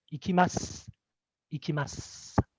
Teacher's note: if it comes at the end of a suffix like desu or masu, and the su will be devoiced. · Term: devoicing of vowels